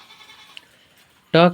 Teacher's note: ट का उच्चारण स्थान है मुर्धा